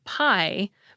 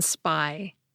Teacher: So for example, we get aspirated /p/ in “pie,” but unaspirated /p/ in “spy.”